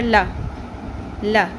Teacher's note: اگر سنگل زبر ہو تو اس کی مقدار آدھی الف کے برابر ہوتی ہے، اس کو شارٹ پڑھتے ہیں